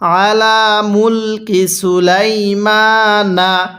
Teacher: তাহলে মা তাতলুশ শায়াতিনু, এরপরে আলা, আইনটা পড়ার সময় গলার মধ্যে চাপ দিয়ে পড়লে আইনটা সহি শুদ্ধ উচ্চারণ হবে